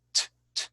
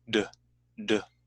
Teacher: You get that thickness of the D sound by involving your vocal cords at the same time. They call it the voiced consonant.